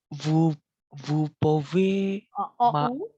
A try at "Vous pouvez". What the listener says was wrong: OU ini dibacanya U.